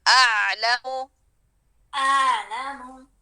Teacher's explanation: اور عین کے پاس جائیں، گلے کے درمیان میں